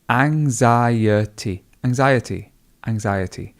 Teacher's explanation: There is actually a very soft G in the middle, or a soft K in the middle